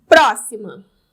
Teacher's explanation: eu tem a palavra próxima proim ma 1 2 3 próxima sílaba tônica anti penúltima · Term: proparoxítona